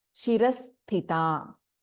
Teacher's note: we have both Mahaprana Tha and Alpa Prana Ta here